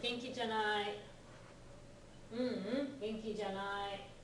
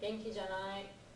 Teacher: The janai, it's not as high, but it's kind of flat on the janai part.